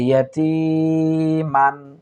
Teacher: এখানে লক্ষ্য করুন তা ইয়াজের তি, অর্থাৎ জেরের বাম পাশে যজমওয়ালা ইয়া, তাহলে আমরা এক আলিফ পরিমাণ টেনে পড়বো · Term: মদের হরফ